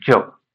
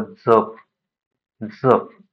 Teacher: य लावून उच्चार होतो आणि अ लावून उच्चार होतो. य लावून उच्चार झाला तर त्याचा अर्थ तो तालव्य गटामध्ये मोडतो आणि अ लावून उच्चार केला तर तो दंत तालव्यमध्ये मोडतो. म्हणजे य लावून ज्याचा उच्चार होतो त्याचं उच्चारस्थान जे आहे ते तालव्य आहे.